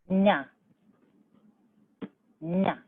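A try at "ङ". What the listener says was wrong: Nga. Take your tongue further back. Go say g. See where your tongue touches? G. G.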